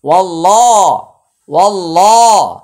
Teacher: আল্লাহ শব্দের পূর্বে একটি জবর আসছে, তাই এটা উচ্চারণে মোটা হবে, আর মাঝখানে আলিফ এবং লাম এটা উচ্চারণে আসবে না।